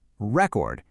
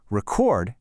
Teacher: When you put the stress on the first syllable, record, it's a noun, a thing. But shift that same beat to the second syllable, record, and bam, it's instantly a verb, an action.